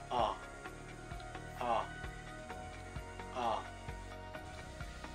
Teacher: Ang ponemang O ay nasa likod at binibigas ito na ang posisyon ng dila ay nasa gitna.